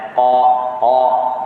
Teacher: Qaf di pangkal lidah, paling hujung. Hujung antara di kawasan lidah, paling hujung adalah qaf, iaitu di bahagian pangkal. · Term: isti'la